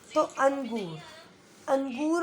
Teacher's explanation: बिना स्वर के आपके केवल और केवल आधा न आ रहा है, जो आधा व्यंजन है